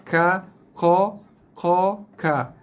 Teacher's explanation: Satu kampung sebab kedua-dua huruf ni datang daripada pangkal lidah. Cumanya yang ini duduk di pangkal lidah yang paling dalam, yang ini duduk di pangkal lidah yang atas sikit.